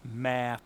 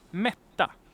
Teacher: Ma, long vowel, short consonant.